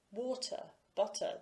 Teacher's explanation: in the uk setting not having post vocalic r i e not pronouncing the r at the end of words is the prestigious pronunciation